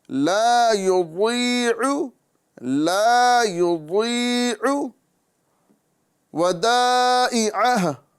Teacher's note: واد جو ہے یہ زبان کی کروٹ اور اوپر کے داڑوں کی جڑ سے ادا ہوتا ہے